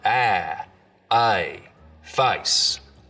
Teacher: the diphthong in face starts real low down around ah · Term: face lowering